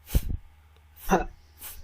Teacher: উপরের দাঁত নিচের লিপসে লাগতে হবে।